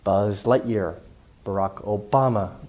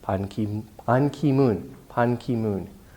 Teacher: family names or last names tend to get more stress than the first or personal names.